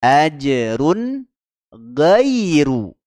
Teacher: izhar halqi kita baca jelas ya tanpa dengung tanpa Qalqalah